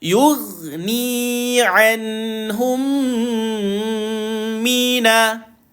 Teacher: Maka berlakulah bacaan idgham mislaini. Maka tuan-puan, rapat bibir dengung 2 harakat.